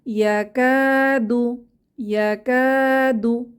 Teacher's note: কাতে এক আলিফ টেনে পড়বো আলিফ মাদ